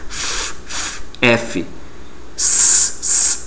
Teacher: meus dentes superiores vão estar tocando os lábios inferiores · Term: letra F